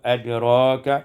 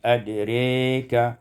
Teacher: imanatu fathatil ra wal alif, dibaca imalah fathah ra dan alif